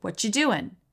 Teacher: this is also really common t plus y gets a CH